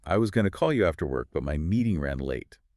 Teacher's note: When I focus on really punching the word late, my voice it naturally does this little acrobatic move. It goes up and then it goes down.